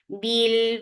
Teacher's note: Bil for kasra give e sound attached with lam. Lam will get sifa of tawassut and tawassut is medium flow of sound.